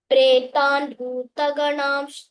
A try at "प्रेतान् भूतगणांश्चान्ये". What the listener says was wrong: There I marked, you missed that Mahaprana. Pretan Bhuta, Bhu. Little more stress and recite. Bhu.